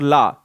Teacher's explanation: जब हम ला को बोलते हैं तो जीभ टक से आगे आती है और पार्श्व भाग से हवा निकल जाती है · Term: पार्श्विक व्यंजन